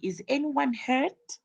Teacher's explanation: question that has is normally gets a yes or no answer so the intonation Rises at the end